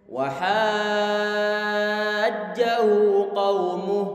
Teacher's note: Kita panjangkan hanya baru kemudian selesai 6 harokat, kemudian huruf jimnya. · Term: mad lazim